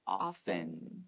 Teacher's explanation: even though it has a t we usually don't pronounce it